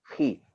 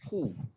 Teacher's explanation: Okey, tapi sebab kita tengah sentuh huruf kha di sini, maka kita sebutkan huruf kha adalah huruf tebal yang memerlukan kita untuk rendahkan rahang kita apabila kita sebut dia berbaris bawah.